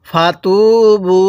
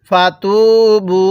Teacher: এই বায়ের মধ্যে আমরা 3 আলিফ টান দিব, কারণ মদের হরফের উপর এরকম চিকন চিহ্ন এরপরে লম্বা হামজা থাকলে সেখানে 3 আলিফ টানতে হয়।